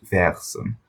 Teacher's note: be careful that the R isn't part of the vowel, it's a separate consonant